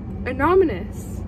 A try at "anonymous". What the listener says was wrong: No, you're adding an extra M. No, anonymous.